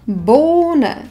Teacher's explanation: Toto H nevyslovíme, pretože stojí za samohláskou O, to O však vyslovíme dlho.